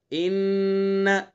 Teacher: چونکہ نون مشدد ہے تو اس لیے نون کے اندر غنہ کرنا ہے